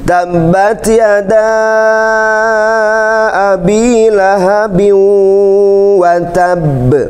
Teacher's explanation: Jadi ada huruf qalqalah, kemudian ada tasydidnya. Maka ketika dipantulkannya itu ada syiddah dulu. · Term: qalqalah kubra